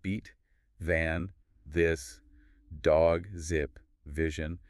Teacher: Like a buzzing feeling, >> right? You feel that vibration. That's your vocal cords working. And generally, you should feel less air coming out of your mouth compared to the unvoiced ones.